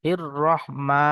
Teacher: খারা জাবার আলিফ মাদ্দার মতো একালি পরিমাণ টান দিতে হবে।